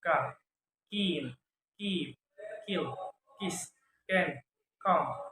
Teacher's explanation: Voiceless velar stop sound